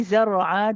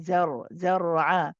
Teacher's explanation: When we say zar'a, the za is light, but the ra is heavy.